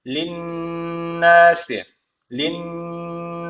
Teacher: var şeddeli nun var mutlaka bir elif miktarı tutacağız bu önemli nun ve mim harfi şeddi alırsa tutuluyordu bir elif miktarı